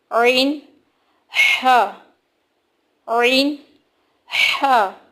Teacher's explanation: pronounced from the middle part of the throat کہ خلق کے درمیان والے حصے سے ادا ہوتے ہیں یہ دونوں